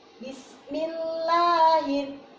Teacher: lahnya ini panjangnya tidak terlalu panjang, mimat tabi'i